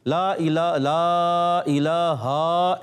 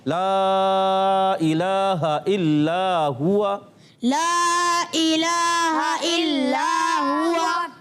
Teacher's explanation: यानी हा की ज़बर लंबी नहीं करनी